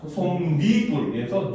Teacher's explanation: 솜과 이불이 더해졌는데 발음하면 어떻게 된다? 솜니불에서 니은이 첨가가 되었죠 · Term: 니은 첨가